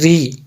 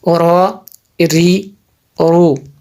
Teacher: اچھا را، اس کو اوری نہیں کریں گے بلکہ ری. را کے نیچے زیر ہو تو اس کو ری پڑھیں گے، اس کو موٹا نہیں کریں گے جی